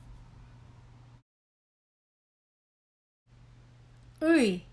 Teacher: is a vowel somewhat resembling the english e in zip but with a more central position of the tongue